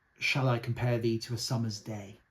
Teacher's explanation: there's five unstressed beats and there's five stressed beats. That makes um sort of 10 beats as it were altogether.